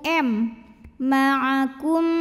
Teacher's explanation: karena mim sukun bertemu dengan mim maka mim pertama lebur ke mim kedua disertai bunyi dengung m ma'akum dan ini juga boleh disebut dengan idghom utama filain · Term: idgham mimi